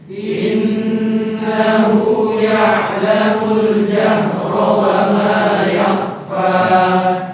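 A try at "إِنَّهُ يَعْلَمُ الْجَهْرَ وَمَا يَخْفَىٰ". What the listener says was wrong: Ya'lamu salah lagi. Ya-nya jangan memanjang. Ya'lamu. Ya'lamu. Ya. Lantangkan bunyi ainnya ya, jahr.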